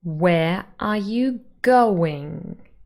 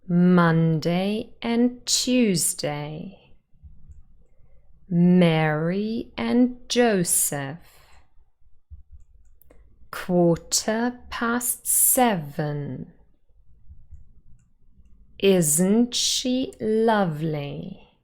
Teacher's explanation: five syllables and the first and the fourth are stressed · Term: stress pattern